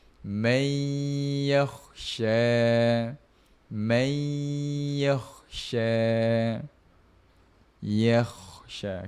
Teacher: Nun mati jumpa dengan huruf ya. Masukkan terus eh. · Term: idgham maal ghunnah